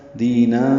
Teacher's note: تنوین کے بعد فا آنے کی وجہ سے اخفا ہوگا، دینا، یہ یہاں پہ نون کی آواز چھپائی جا رہی ہے۔